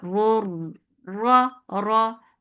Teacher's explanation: this is adgham. So both raws are heavy.